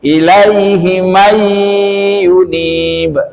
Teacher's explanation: nun mati bertemu dengan ya idgham bi gunnah. Yunibu kalau waqaf karena huruf qalqalah dibaca memantul.